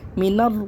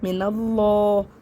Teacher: لفظ اللہ کے لام سے پہلے زبر ہے، اس لیے اس لام کو بھی موٹا پڑھیں گے